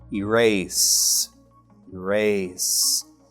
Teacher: any vibration let's check again erase no right this means that the final sound is unvoiced